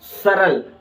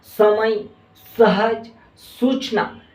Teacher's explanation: समय, सहज, सूचना, ये इन शब्दों का हम जब इस्तेमाल करते हैं, इन शब्दों का हम जब पढ़ते हैं तो ये जो शब्दों का जब हम स्पर्श करते हैं तो हमारी ये जो जीभ होती है ये दांतों के निचले हिस्से को स्पर्श करती है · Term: सदंत